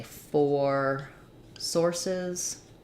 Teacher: for source we have the ore diphthong